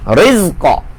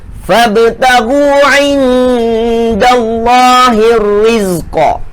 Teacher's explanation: Qalqalah kubra dekat hujung, ya.